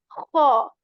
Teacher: we are going to raise the back part of our tongue again in kha